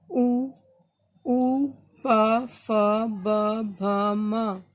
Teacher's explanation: ओष्ठ से, मतलब होठों से, ओष्ठीय।